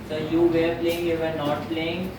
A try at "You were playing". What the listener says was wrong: You were playing, वेयर ना बोला करो, यू वर, ठीक है?